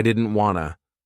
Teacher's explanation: Here, we connect didn't and want and drop the T. So, I didn't wanna Want to, wanna.